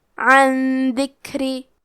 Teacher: اخفاء کا معنی ہے چھپا دینا تو ہم نون ساکن کو چھپاتے ہوئے اور غنہ کے ساتھ یہ حکم کو ادا کریں گے